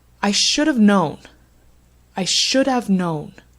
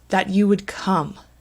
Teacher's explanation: Known and come, they're louder and they're longer. The rest of the sentence, it's a little bit less loud, so it's quieter.